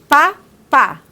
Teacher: Ele é bilabial porque eu utilizo o lábio superior e o inferior. O pá, pá. Ó, então, eu utilizo os dois lábios.